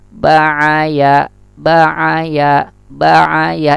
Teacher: ya itu makhrajnya tengah lisan, berjauhan, saling berjauhan dengan langit-langit, sama dengan sya dan ja ya.